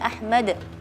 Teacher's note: Tadi tidak ada qalqalah, harusnya Ahmad ya, qalqalah.